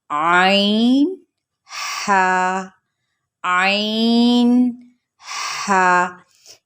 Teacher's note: یہ حلق کے درمیانی حصے سے ادا ہوتے ہیں، جس کو وسط حلق بھی کہا جاتا ہے